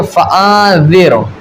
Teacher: را ساکن سے پہلے زیر ہے اسی کلمے میں ہے اور زیر کون سا اصلی زیر ہے تو اب ہم اس را کو باریک پڑھیں گے